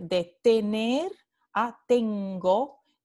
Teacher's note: un ejemplo de la adición de una consonante velar sonora oclusiva G. Y este cambio ocurre antes de las vocales O A, ¿no?